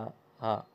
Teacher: तो घोष और महाप्राण है हा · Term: घोष महाप्राण